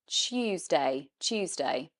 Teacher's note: We actually say it more of a ch sound, Tuesday. We don't say, like in American English, Tuesday, which is of course just saying the T and then no ya sound.